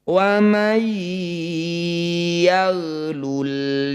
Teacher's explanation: Ini disebut bacaan idgham bighunah. Bunyi nun sukun disisipkan ke dalam ya. Jangan lupa untuk mengucapkan bunyi sengau selama dua harakat. · Bunyi nun sukun masukkan pada ya. Jangan lupa dengungkan 2 harokat. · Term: idgham bi gunnah